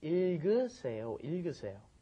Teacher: that last G gets moved up in front of the next vowel